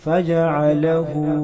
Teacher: हा पर उल्टा पेश है, इसको भी 1 अलिफ के बराबर खींच कर पढ़ा जाएगा